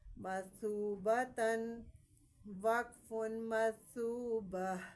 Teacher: اب آپ یہاں پہ یہ بات آپ نے یاد رکھنی ہے، جب ہم دو زبر تا کے اوپر جب دو زبر ہوتے ہیں تو وہ دونوں کیا کریں گے، ہا کی ساؤنڈ آئے گی، گول تا کو ہا میں بدل دیتے ہیں